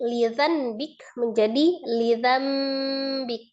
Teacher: Dari asal kata lidzambik menjadi lidzambik disertai dengan gunnah. Jadi nun sukunnya dirubah menjadi mim sukun, kemudian ada gunnahnya ya.